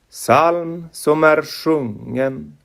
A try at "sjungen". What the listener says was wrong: Sjungen, it's not a hard G, you don't release the G. Psalm som är sjungen.